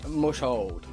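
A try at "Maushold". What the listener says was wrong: Bro, I got a you mush- did not just go Mushhold. Name's Mousehold. There's four mouse in it as well. I know, like, the SH wants you to go...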